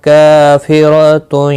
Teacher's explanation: وَأُخْرَى خا مستعلیہ ہے، پر پڑھا جائے گا، را کے اوپر کھڑی زبر ہے، ایک الف کی مقدار کے برابر کھینچ کر پڑھیں گے، اور را پر بھی پڑھا جائے گا۔ کافرۃ کا الف مدہ ہے، ایک الف کی مقدار کے برابر کھینچ کر پڑھیں گے، را زبر کی وجہ سے پر پڑھا جائے گا